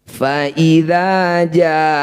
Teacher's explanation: Mad tabi'i bertemu hamzah di 1 kata, disebut bacaan mad wajib muttasil. Ja yang bertanda layar panjangkan 6 harokat atau 6 ketukan.